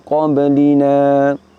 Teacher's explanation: Setelah nun fathah kita dapati huruf alif. Di sini alifnya ditetapkan, tidak dihilangkan, sehingga nun fathahnya dibaca panjang. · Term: isbat